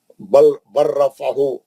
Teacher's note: لام ساکن کے بعد را آئیں گا, لام ساکن نہیں پڑھا جائے گا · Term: ادغام متقاربین